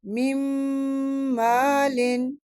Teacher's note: نون ساکن کے بعد میم ہے، ادغام مال غنہ